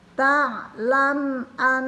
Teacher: mim mati bertemu alif juga dibaca jelas.